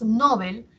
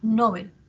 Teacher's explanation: Si nosotros, por ejemplo, pronunciamos Nobel, estamos haciendo que la sílaba tónica esté en no, ¿cierto? Y mientras que Bel hacemos que sea la átona